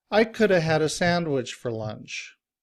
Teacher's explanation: the function words are said shorter and faster than the content words